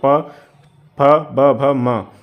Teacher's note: प फ ब भ म ये आपके आ जाएंगे किसमें ओस्ट में